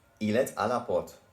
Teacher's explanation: we have to pronounce the T in et because A is a vowel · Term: liaison